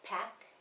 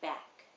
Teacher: the p is a voiceless sound and the b is voiced when you make the b you're using your vocal cords and